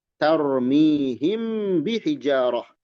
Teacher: Mim sukun menghadapi ba namanya ikhfa syafawi.